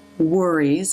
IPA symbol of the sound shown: ɹ